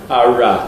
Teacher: What you can hear is it is an approximant. So it’s the resonance of the sound. The tongue is way away from the roof of the mouth. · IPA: [ɑɹɑ]